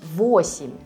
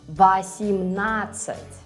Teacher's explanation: When O is stressed, like in 8, you read it as O, and when it's not, you will read it as A, like in 18.